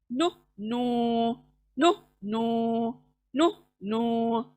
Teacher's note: जबान की नोक सामने के दांतों के मसूड़ों को टच होती है, तब जाके नून अदा हो रहा है, नु नू नु नू नु नू।